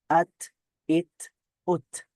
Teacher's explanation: আওয়াজটা বন্ধ হয়ে যাবে কিন্তু বাতাসটা জারি থাকবে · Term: হামস